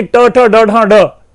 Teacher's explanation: वो ण जो है उसका स्पष्ट उच्चारण नहीं कर पाते, वो ना को भी ड बोल देते हैं। तो इस तरह से यानी ट ठ ड ढ ड ऐसे बोल लेते हैं।